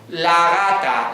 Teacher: Si ahora digo la gata, ya no llego a hacer la oclusiva